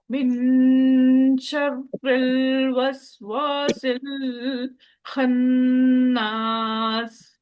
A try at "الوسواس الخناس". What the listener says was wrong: واسل پہ اتنا رکنا نہیں ہے. وسواسل خناس. الوسواس الخناس. سین کے اندر سیٹی لائیے.